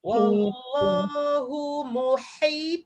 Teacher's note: Ha kena pedas, ta kena tebal.